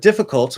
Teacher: In the word difficult, we have the half L vowel sound, or the dark L, as it's commonly called. And I call it the half L vowel sound because it more or less, not 100%, but it basically is a vowel.